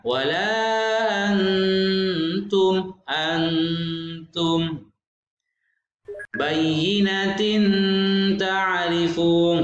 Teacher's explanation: Ikhfa ini agak dengung ya, dimasukkan agak samar, tapi suara tanwinnya atau nunnya masih terdengar, masih ada.